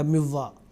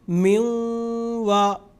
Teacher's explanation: 2 سے 3 سیکنڈ ناک سے غنہ کی آواز ہم نکالیں گے. میوں وا، میں یو، اس طریقے سے.